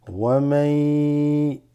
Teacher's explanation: So min qablu waman. You have a ya followed after the noon sakina. So there's an assimilation here.